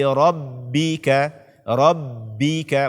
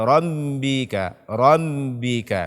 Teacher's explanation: jangan sampai kita mengikutsertakan rongga hidung di dalam membaca huruf ba